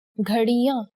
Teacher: Here the Anuswar makes it sound like the ng in the English word song. The Chandrabindu is no different than the Anuswar, and it works very similarly to it by nasalizing the vowel above which it is placed. For example, clocks, ghadiyan.